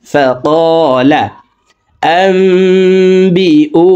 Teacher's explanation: ফাকালা আম্বিউনি, আম এখানে ইকলাব গুন্না, নুন সাকিনের পর ইকলাবের হরফ বা আসছে, এই কারণে এই মিম দ্বারা পরিবর্তন করিয়া গুন্নার সহিত পড়ব। আম্বিউ, উ এক আলিফ টান।